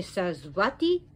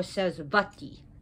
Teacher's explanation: in Sanskrit, the V is interchangeable with the W.